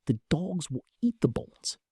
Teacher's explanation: The mouth rushes through the and will to keep the beat.